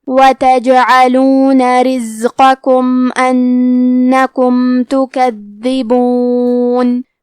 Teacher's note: کلمت رزقکم میں زے ساکن ہے، تو ہم زے کو ظاہر کریں گے، حرف القاف کو موٹی آواز میں پڑھیں گے۔ کلمت انکم میں نون پہ تشدید ہے، لہذا 2 حرف کے برابر نون کو پڑھنا ہے